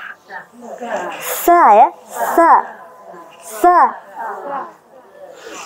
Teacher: Ujung lidah ke gigi seri bawah.